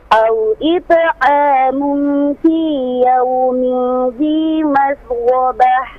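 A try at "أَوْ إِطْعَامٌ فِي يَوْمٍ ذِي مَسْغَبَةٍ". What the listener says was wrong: Baik, untuk ta di sini huruf ta pantulan qalqalah ini tebal, bukan au it'amun. Nah, itu tipis.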